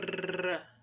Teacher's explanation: O R é uma vibrante, porque há uma vibração da ponta da língua, múltipla, porque é mais de uma vibração, e há um vozeamento da glote. Então, esse movimento, como nós vimos agora na animação passo a passo, é da ponta da língua, por isso é chamada de alveolar, e que vai em relação à região dos alvéolos. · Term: vibrante múltipla